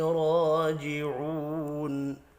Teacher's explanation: راجعون را کے اوپر کھڑی زبر ہے، 1 الف کے برابر کھینچ کر پڑھیں گے